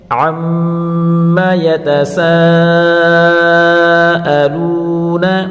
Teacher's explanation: الف مدہ کے بعد حمزہ آ رہا ہے اسی کلمے میں، تو یہ مد متصل ہوگی، اس کو 4 الف کی مقدار کھینچ کر پڑھیں گے · یہاں واو مدہ ہے، واو مدہ کو 1 الف کی مقدار کھینچ کر پڑھیں گے